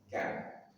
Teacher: pangkal lidah lebih ke depan daripada makhraj huruf qof ka dan dia tipis tapi kan. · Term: kaf